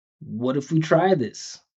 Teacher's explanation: So if we're going to look at this phrase, the most important part of this whole phrase is try. So we need to emphasize the vowel.